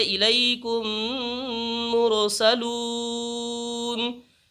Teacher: میم ساکن کے بعد میم آئے تو میم کو میم سے ملا کر غنہ کے ساتھ پڑھا جائے گا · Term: ادغام شفوی